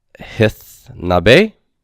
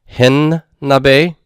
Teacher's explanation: And then hithna becomes hinna. Okay, so the tav becomes a nun, fully assimilates to that following nun, and then the nun is written once with a dagesh forte. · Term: assimilation